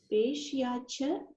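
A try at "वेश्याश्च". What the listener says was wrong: Okay, yeah, it's correct only. Veshyacha, yes. I think Shakara is missing. Veshyascha. Veshyaha. Then cha.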